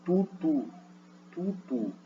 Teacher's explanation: A labialização é quando, por exemplo, a consoante apresenta a propriedade que você vai ter um arredondamento dos lábios.